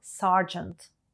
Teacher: необхідно мати 12 років служби twelve Service увага слова сержант англійською вимовляється не зі звуком іо як натякає написання А зі звуком а